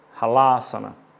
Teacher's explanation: primeiro A curto, segundo A longo. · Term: Vogais longas e curtas